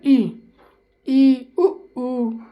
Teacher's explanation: ई उ तो बहुत हल्का सा खुला रहता है। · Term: संवृत